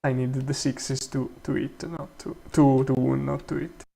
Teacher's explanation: wound doesn't have the F0 peak of the contrastive corrective focus. And it's actually the F0 is going downwards. It's not even accented.